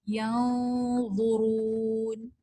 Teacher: اسی طرح وا جو ہے نون ساکن کے بعد یہ بھی موٹا حرف ہے تو یہ بھی نون ساکن کا یہ جو غنہ ہے یہاں پہ ہیوی ہو جائے گا